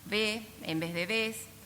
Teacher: la pérdida de la fricativa alveolar sorda en posición final de sílaba